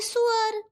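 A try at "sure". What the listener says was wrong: भाभी जी it's not what you said, it's श्योर। नहीं, नॉट सुअर, इट्स श्योर। देखिए बोलिए श्योर। देखिए मैं, देखिए डिफरेंस है सा और शाह में। फाइन, आप जरा चोच निकालिए ऐसे।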